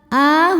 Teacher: hukumnya mad badal sebab ada hamzah yang dipanjangkan. Cara bacanya panjang dua harakat.